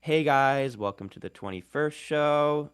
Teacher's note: sort of that uptalk uh characteristic of like valley girl English